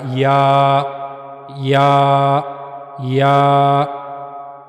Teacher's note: जबान का दरमियानी हिस्सा मुंह के ऊपर वाले हिस्से की तरफ उठेगा। वहां से या अदा होगा। · زبان کا درمیانی حصہ منہ کے اوپر والے حصے کی طرف اٹھے گا، وہاں سے یا ادا ہوگا،